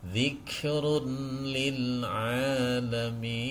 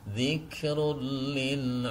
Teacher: ketika tanwin kalau di sini adalah nun sukun di sini adalah tanwin bertemu dengan huruf lam cara membacanya memasukkan tanwin ini ke dalam huruf lam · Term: Idam Bil ghunah